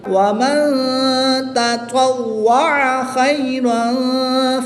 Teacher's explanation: اب تا اور طا کی ادائیگی کا خاص خیال کریں گے، تا کو باریک پڑھنا ہے کیونکہ یہ حروف مستفلہ میں سے ہے، اور طا حروف مستعلیہ میں سے ہے، اور حروف مستعلیہ ہر حالت میں پر یعنی موٹے پڑھ جاتے ہیں تو اس کو پر یعنی موٹا پڑھیں گے۔ اس تا کو باریک اور طا کو پر پڑھیں گے۔